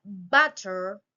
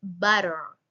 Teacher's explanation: in British English has a clear T sound, but in American English it often sounds more like butter with a softer T